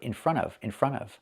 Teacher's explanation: when you hear it, it sounds like one word, in front of. In front of, but it's three words.